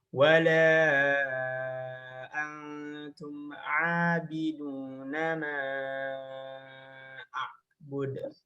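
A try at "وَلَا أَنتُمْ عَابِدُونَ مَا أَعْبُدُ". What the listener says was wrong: Coba lam sama mim lebih tipis. La. Ma. Nah, jangan wala antum abidun ma. La sama ma. Wala antum abiduna ma a'bud.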